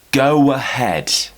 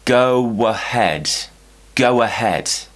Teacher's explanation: if we're doing a round shape, we then need to create a W to join to the next word, a W consonant. So, go ahead becomes go ahead, go ahead.